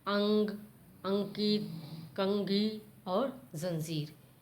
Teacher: इसको बोलते समय हमें नाक का सहारा लेते हैं, इसमें आपका मुंह नहीं चलता है।